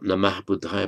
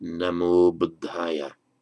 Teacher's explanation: For the Pali students, bear in mind that in Sanskrit, this ah ending changes to o in certain contexts, primarily before a voiced consonant. but also before a word beginning with a short a.